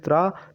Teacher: ता और रा से मिलकर बना है त्रा, तो इसलिए इनके उच्चारण स्थान हो जाएगा हम लोगों का दंत और मूर्धा, क्योंकि ता का उच्चारण स्थान दंत होता है और रा का मूर्धा।